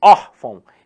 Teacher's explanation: E não é orfão, é órfão. Então aqui a sílaba tônica está no or.